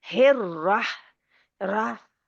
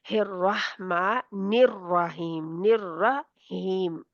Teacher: वो हा जो है वो हलक के दरमियान से रगड़ा खा के निकलती है। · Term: हलवे वाली हा